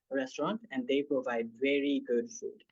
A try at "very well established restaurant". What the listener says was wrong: Cool, very well established restaurant. I do feel like maybe the stress timing is a little bit strange, but okay.